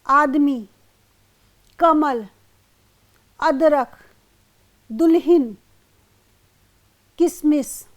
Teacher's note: यहाँ पर अंतिम अक्षर से पहले वाले अक्षर पे जोर पड़ रहा है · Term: स्वराघात